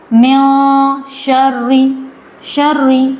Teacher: تشدید والا حرف ہے یہ جو را ہے، تشدید والا حرف ہے، مشدد اس کو کہیں گے. تو را مشدد ہے، اس کو سختی سے پڑھا جائے گا